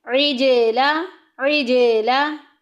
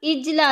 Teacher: عج میں آواز کو ہلائیں گے کیونکہ جیم جو ہے یہ حروف قلقلہ میں سے ہے۔ جب حروف قلقلہ ساکن ہوتے ہیں تو یہ آواز میں لہراؤ پیدا کرتے ہیں، یعنی کہ آواز کو ہلا کے نکالا جاتا ہے، جنبش دے کے نکالا جاتا ہے۔